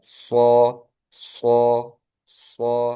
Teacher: Sod ini juga memiliki sifat sofir seperti sin sama zai, tapi dia juga tebal.